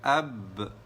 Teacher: Jadi kita tahu makhraj ba di mulut, di bibir.